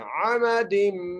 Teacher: दाल को मीम से मिलाना है और गुन्ना करना है, अमदिम मुमद्ददा, दो मीम है, बड़ी एहतियात से पढ़ना है, खींच कर नहीं पढ़ना, बगैर खींचे पढ़ना है।